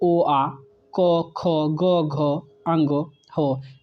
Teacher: कंठ की बात करें तो ओ, आ, क, ख, ग, घ, अंग, हो, ये कंठ वर्ग से होता है